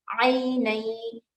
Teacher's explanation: یا زبر عی نون یا دو زبر نئی ایسے ملانا ہے اس میں نون کو یا میں ملانا ہے یعنی ادغام کرنا ہے